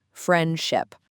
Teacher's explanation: in the word friendship, almost no native speaker clearly says the D sound. It just becomes friendship. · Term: elision